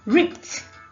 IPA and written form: rɪpt (Ripped)